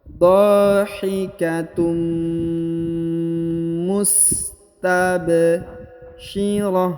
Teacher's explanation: huruf tanwin un bertemu dengan mim. Ditahan, ditekan, dan didengungkan 2 harokat.